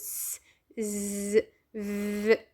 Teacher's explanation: لما أقول أصوات fricative اهتزازية معناتها إنه الهواء يخرج بممر ضيق جدا ويسبب لنا اهتزاز